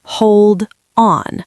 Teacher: If I say it separately, hold on, the D is hard. It stops the air.